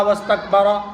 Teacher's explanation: واستکبر کا جو را ہے وہ پر ہوگا، منہ بھر کے پڑھا جائے گا، کیوں؟ اس لیے کہ را کے اوپر زبر یا پیش ہو تو پر، زیر ہو تو باریک ہوتا ہے۔